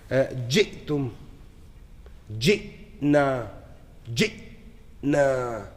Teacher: the hamza is the only one that has no hams, no release of gas, no kalkala, no nothing. It just stops. Abrupt, glottal stop.